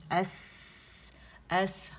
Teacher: کیونکہ وائس لیس لیٹر ہے، تو پیچھے سے جو ساؤنڈ باکس میں ہوا لے کر آتی ہے بنی ہوئی آواز کو، تو وہ یہاں سے جب ظاہر ہوتی ہے تو ہوا ہاتھوں پر فیل بھی ہوگی. ٹھیک ہے، بولے ایس، ایس، ہاتھ سامنے رکھیں اور فیل کریں ایس.